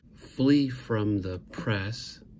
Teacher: the trochaic inversion it's strong weak weak strong